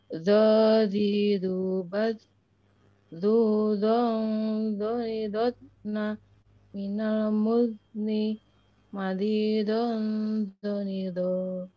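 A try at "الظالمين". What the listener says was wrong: Saat zotna itu masih tertahan nafasnya, tapi mudni sudah betul. Mudni, mudni ya.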